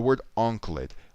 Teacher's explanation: the word anklet Ankh is where all the emphasis is